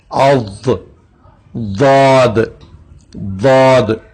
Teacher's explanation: یہ حافیہ حرف ہے، ازراز سے ادا ہوتا ہے